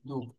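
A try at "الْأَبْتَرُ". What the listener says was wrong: আচ্ছা, এটা কি দাল হবে? ডালের নিচের অংশ কিন্তু দাগের নিচে সাধারণত লেখা হয় না। এটা দাল ছাড়া অন্য কি হইতে পারে? র। র হবে এটা। র পেশ শুরু। অক্ফ করলে আমরা রয়ে জজম পড়বো। নম্বর জি আব তার।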